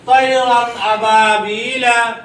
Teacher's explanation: دو زبر تنوین کے بعد حروف حلقی کے 6 حروف میں سے حمزہ آیا ہے. اس لیے دو زبر تنوین کی آواز کو ظاہر کر کے پڑھیں گے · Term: اظہار حلقی